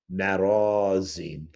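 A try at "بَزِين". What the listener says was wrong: No, the the the first letter is B.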